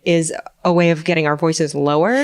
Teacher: So they kind of vibrate together, and they vibrate together periodically, sort of like a wave, right? But when we do creaky voice, they vibrate aperiodically. And so what happens is the pitch actually drops out. So we get to the bottom of our range when we do that.